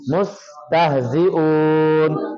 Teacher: یہ سین کو پڑھتے ہوئے سیٹی کی آواز آنی چاہیے.